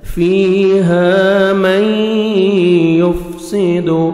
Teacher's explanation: نون ساکن کے بعد حروف یرملون جو 6 لیٹرز ہیں ان میں سے یا آ رہے ہیں تو غنہ کے ساتھ آپ نے ادغام کرنا ہے۔ میں، میم کو ہم یا مشدد کے ساتھ ملائیں گے، شد سے پہلے سکون والا لیٹر نہیں پڑھتے۔